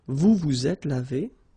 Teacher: final S is not pronounced